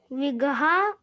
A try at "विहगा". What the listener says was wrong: बिगहा नहीं, यहाँ खेत वोत नहीं है, बिगहा नहीं है, बिहगा हा है। आप गा क्यों पहले ला रहे हो? हा को पहले लाइए। बिहगा, बिगा मीन्स पक्षी होते हैं, यहाँ पे